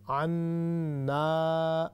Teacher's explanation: نون کو لمبا کرنا کیونکہ شدہ بھی ہے نا تو اگے الف مد بھی ہے